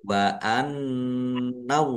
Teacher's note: allahnya dibaca tebal karena harakat di depannya fathah. Lam fathah berdiri mad thobi'i panjang dua harakat.